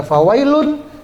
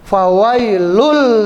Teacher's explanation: Idam yang tidak berdengung jadi bacanya langsung